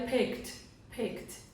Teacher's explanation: ele tem o som de K, ele é bem sutil, então ele vai ter o som de T